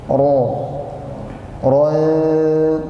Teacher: di situ ada huruf ro berharakat fathah maka dibaca tebal